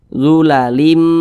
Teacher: memasukkan kemudian juga disertai dengan dengungan Nah jadi apa yang dimasukkan bunyi tanwin ini dimasukkan ke huruf mim · samping huruf mim termasuk salah satu huruf idgham B ghunah lagi maka cara membacanya dengan cara memasukkan kemudian juga disertai dengan dengungan